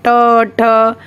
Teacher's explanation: मूर्धा यानी कि हमारी टंग होती है, जो जीभ होती है वो टर्न ले लेती है थोड़ा सा